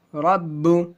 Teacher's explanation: را با زبر رب، با پیش بو، رب. جہاں پر بھی با آتا ہے رب وہاں پہ جھٹکا ہوتا ہے، قلقلہ حروف قلقلہ ہے با.